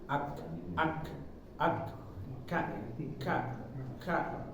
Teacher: Kaf ini dia karakter hurufnya Hames atau keluar angin sedikit sedikit aja jangan kebanyakan